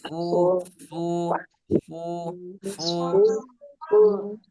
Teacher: huruf fa ini ada di perut bibir